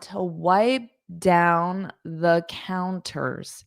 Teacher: I don't push out that P sound